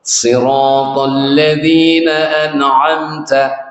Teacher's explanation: Sirat karena rohnya tafkhim, jadi agak kesulitan membaca sin maka dibaca sad.